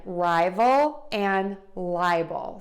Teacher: We're going to stress syllable number 1 in both of these words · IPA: /ˈraɪvəl/ ; /ˈlaɪbəl/